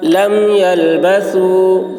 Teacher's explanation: ثا کی آواز باریک ہوگی